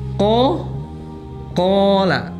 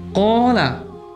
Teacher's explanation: Al-jauf ini berarti keluarnya huruf di al-jauf ini ada di rongga mulut dan rongga tenggorokan.